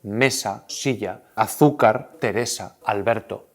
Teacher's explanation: Palabras con el golpe de voz, con el golpe tónico en la penúltima sílaba. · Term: palabras llanas